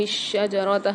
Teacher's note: شین کے اوپر تشدید آ رہی ہے، مشدد آ رہی ہے، اس کو سختی اور جماؤ کے ساتھ پڑھیں گے